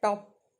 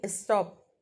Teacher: That is unaspirated. So in top P is aspirated, in stop P is unaspirated. No puff is made.